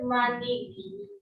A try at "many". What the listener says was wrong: Many. Bukan money. Many. Ini dibaca many. Many.